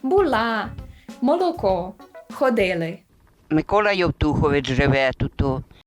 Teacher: у частині полтавських говірок поширений особливий звук л. Ясенний або альвеолярний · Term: альвеолярне ли